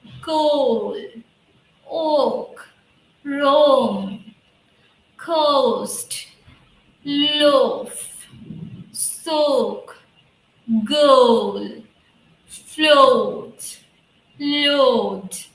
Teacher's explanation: so first the o sound is coming and it is ending with a small a sound